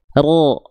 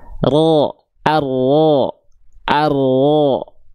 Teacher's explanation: Jadi yang nempelnya adalah bagian punggung lidah, ujung lidahnya dia nggak nempel. Makanya ada celah kecil di sini. · Huruf ro itu dilafalkan dari bagian ujung lidah, namun bukan ujungnya banget, tapi di bagian punggung lidah di sini. Nah, di sini dan di sini.